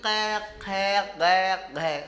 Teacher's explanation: जब आप कै की लाइन बोलोगे कै खे गै, तो आपके जीभ का पिछला हिस्सा, हलक वाला हिस्सा आपके कागले को टच करता है, कंठ को